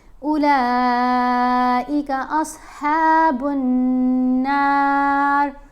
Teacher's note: لام کے اوپر یہ جو مد ہے اس کو 5 الف جتنا آپ لمبا پڑھیں گے